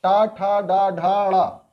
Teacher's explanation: मूर्धन्य व्यंजन, जिसमें बोलने में जुबान मुड़ जाए